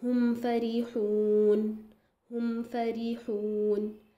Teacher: जब मीम साकिन के बाद फ़ा और वाव अगर आए तो थोड़ा सा ज़्यादा आप ज़ाहिर और कवी इज़हार करेंगे। क्यों, क्योंकि फिर फ़ा और वाव भी शफ़तान के मखरज से ही आ रहे हैं, यानी कि होठों से ही ये आ रहे हैं, तो आपको चाहिए कि थोड़ा सा ज़्यादा ध्यान से पढ़ें।